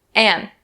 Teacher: So a lot of people will change the word and to an. An. We drop that D sound.